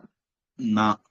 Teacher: பல்லுக்கு இடையில நாக்க வச்சு சொன்னா நா, அப்படித்தான் சொல்லணும்.